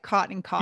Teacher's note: We're taking part in a vowel merger called the caught merger. So the words C-O-T and C-A-U-G-H-T are starting to sound alike in the mouths of some Californians · I'm from the Northeast. And to me, I actually pronounce them the same way